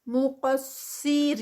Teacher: مقصرین، قاف ہیوی، صاد ہیوی، ان کو ہیوی ہی رکھنا ہے، اور آگے رینا پہ 2 کاؤنٹس. مقصرین، صاد تھوڑی سی ہیوینس کم ہوگی اس کی کسرہ کے ساتھ، لیکن سٹل برقرار رہے گی، اور پھر سٹاپ پہ 4 کاؤنٹس.